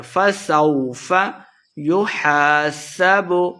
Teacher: الف مد ہے، دو حرکات لمبا کر کے پڑھیں گے